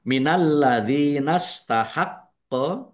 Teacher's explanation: Lamnya ada tasdidnya dibaca dobel ditampakkan apa? Ditahan ditekan biar tampak dobel. D kasrh ya sukun mad thobi'i panjang dua harakat.